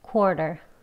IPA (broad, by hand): ˈkwɔːr.tər